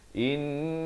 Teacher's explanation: Lafz jalalah ni dibaca tebal 2 harakat.